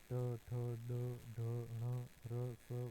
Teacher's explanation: जीभ का तालू के सबसे ऊपर के भाग मूर्धा से लगकर उच्चारण करना